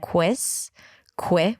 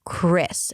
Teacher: You do want to round your lips like a W sound, but you want to bring the tongue to the middle of the mouth, and the sides of the tongue should touch the sides of the teeth, until you hear that tense, rough sound of the R, Chris, and then it's relaxed is sound, Chris, and then it's an M, a schwa, and an S. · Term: R sound